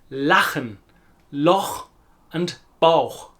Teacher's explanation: After these vowels, A, O, U, it's a slightly harsher, throatier sound. It comes less from the front of the mouth and more from the back of the throat. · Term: German CH sound